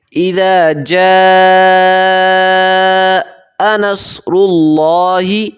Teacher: اذا پہ نرمی کریں گے، جا پہ مد کریں گے، 5 الف مقدار یہاں پہ مد ہوگی، یہ بڑی مد ہے، یعنی کہ 5 سیکنڈ کھینچیں گے اس کو۔